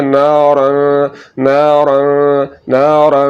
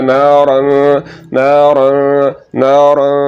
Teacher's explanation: गुन्ना करते हुए आवाज़ नाक में जाती है और थोड़ा सा लंबा होती है। तो यहाँ पर नाक में आवाज़ को ले जाकर आपने थोड़ा सा लंबा करना है और पढ़ना है ना और ना और ना और।